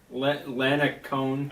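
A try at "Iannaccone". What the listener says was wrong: Ianacone. It's an I, not an L, because it's his name. Ianacone.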